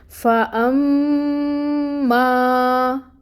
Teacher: اور یہ جو فتحہ کی حرکت ہے، آپ دیکھیں کہ الف ساکن ہے، اور الف ساکن سے پہلے فتحہ کی حرکت ہے، تو اس ما کو ہم نے 2 کاؤنٹس کے برابر لمبا کھینچنا ہے۔ کیونکہ یہاں پہ الف مد بھی ہو رہی ہے، ٹھیک ہے؟